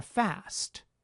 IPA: fæst